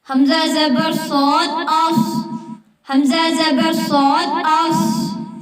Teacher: صاد ہمیشہ پر پڑھا جاتا ہے، یعنی موٹا پڑھا جاتا ہے، کیونکہ یہ حروف مستعالیہ میں سے ہے